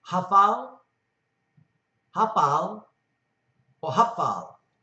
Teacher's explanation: P's and F's are interchangeable, and sometimes the sound falls between the two